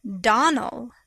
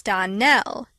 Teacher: Accent on the last syllable